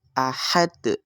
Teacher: Kemudian kita membacanya dengan diwakafkan, maka di situ disebut dengan qalqalah kubra atau pantulannya itu lebih besar. Ahad seperti itu. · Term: qalqalah kubro